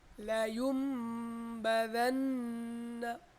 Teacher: এখানে লায়ুন হয়ে যাবে লায়ুম, লায়ুম বাদান্না, লায়ুম লায়ুম ইউম লায়ুম বাদান্না إذ انبعث إذ انبعث إذا بهم إذا بهم سميعا بصيرا سميعا بصيرا, গুণনা হবে কিন্তু গুণনা কিন্তু সাধারণত এক আলিফ পরিমাণ দিতেই হয়, মিনিমাম এক আলিফ দিতে হয়, ঠিক আছে গুণনা। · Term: একলাব